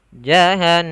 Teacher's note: Jahannam ada nun bertasydid, maka ini wajib kita tahan. Jahannama, tidak jahannama, tapi ditahan dulu suara n-nya 2 harokat.